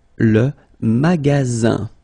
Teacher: you've got only one S between two vowels. Then you get the sound Z, alright? And then the ending here is IN, so it's nasal, it goes in your nose, and it's un.